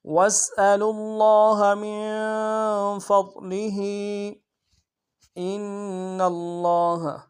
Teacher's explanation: میں کھینچیں گے. من فضلہ، میم کو نون کے ساتھ ملانا، نون ساکن غنہ کریں گے، فا کو ضاد کے ساتھ ملانا، ضاد کو موٹا ادا کریں گے ، لام کو نمشہ ادا کریں گے، حق نیچے کھڑی زہر